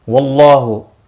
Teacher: اللہ کا لام زبر کی وجہ سے پر ہوگا، اس کے اوپر کھڑی زبر بھی ہے، ایک الف کے برابر کھینچ کر پڑھیں گے۔